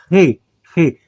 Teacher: Re é uma gutural. Então, observa como eu pronuncio Re. Você puxa ele aqui na garganta